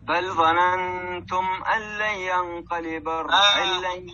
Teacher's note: والنون بتاعت ينقلب دخلت في القاف إخفاء حقيقي · النون الأولى دخلت في اللام إدغام كامل، والنون الثانية دخلت في الياء إدغام بغنة إدغام ناقص